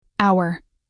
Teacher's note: The H is silent. The first sound you hear is ow, which is a vowel sound. So we say an hour.